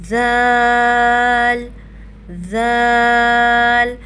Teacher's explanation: ذال کو بھی بالکل نرمی سے ادا کریں گے، سیٹی کی آواز بالکل بھی نہ آئے